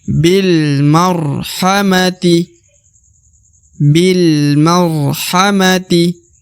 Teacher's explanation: Ya, huruf B di depannya terdapat alif, lalu terdapat lam berharokat sukun. Maka alifnya tidak dibaca atau tidak dianggap karena B langsung masuk ke huruf lam.